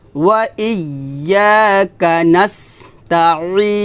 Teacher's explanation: আইনটা চাপ দিয়ে বলতে হবে গলার মাঝখান থেকে